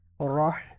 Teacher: ہا جو ہے ہا کو حلق کے درمیان سے نکالتے ہیں تو انہوں نے راہ اس طرح پڑھا ہے.